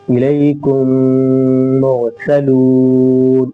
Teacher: میم ساکن کے بعد میم آ گیا، اس لیے ادغام شفوی ہوگا۔ اس طرح کریں گے، حمزہ زیری لامی ازبر الی، کاف میم پیش کم، الیکم، میم کو میم سے ملا دیں گے، میم را پیش مر، سین زبر سا، مرسا، لام واو پیش لو، مرسلو، نون زبر نا، مرسلون۔